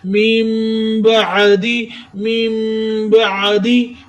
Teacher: आइन का लफ्ज सीने के दरमियाने हिस्से से अदा करे